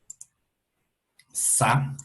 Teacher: las zonas de mayor energía están en la parte de alta frecuencia · Esto es generado por la turbulencia del aire saliendo por la constricción, ¿cierto? Que se genera en los dientes y la lengua. y esto es lo que se ve, esto es lo que captura el micrófono. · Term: fricativa